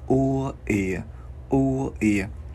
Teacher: Chữ U không có chu môi